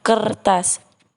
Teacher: terakhir yaitu retrofleksi yaitu penambahan bunyi sertaan yang dihasilkan dengan cara lidah ditarik kebelakang segera atau ketika bunyi utama diucapkan sehingga terdengar bunyi sertaan er